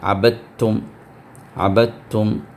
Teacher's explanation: اب عبدتم میں دال کو جزم ہے لیکن اس کے بعد تا کو شدہ آ گیا، تو دال پوری طرح سے تا کے اندر وہ ضم ہو جائے گا، تو لہٰذا دال کا ساؤنڈ نہیں آئے گا وہاں پر، عبدتم نہیں پڑھنا ہے، عبدتم، عبدتم۔